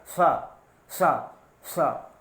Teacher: तो इस तरह से इसकी जो हवा होती है वो मूर्धा से टकराती है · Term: मूर्धन्य सा